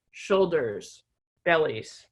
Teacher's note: a two-syllable word with the stress on the first syllable